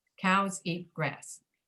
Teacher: When you say that sentence, the stress is pretty even on all three words. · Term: 3 beats